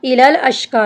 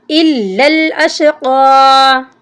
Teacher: इलल अश्क़ा, यानी हमज़ा को लाम के साथ मिलाते ही नहीं हैं, लाम के ऊपर शाद है, इसको हमने सख्ती से पढ़ना है